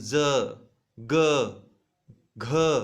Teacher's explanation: आपके स्वर यंत्रियों में कंपन हो रहा है। स्वर यंत्र जो है वो कंपन थोड़ा सा होता है। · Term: सघोष